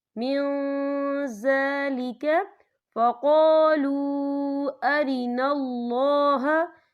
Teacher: نون ساکن کی آواز کو ناک میں چھپائیں گے. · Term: اکفا